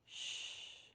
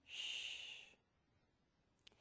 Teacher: To make this consonant sound, your lips are rounded and the tongue tip is behind the top front teeth. But it is important that it is not touching the teeth. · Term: SH sound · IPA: /ʃ/